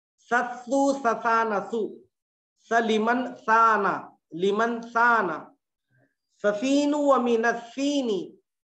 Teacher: जबान की नोक दांतों के बाहर निकाल के पढ़ेंगे, ये सा का मखरज है